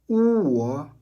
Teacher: La clé est la forme très ronde et avancée des lèvres. Pour trouver le son, pensez au mot anglais work.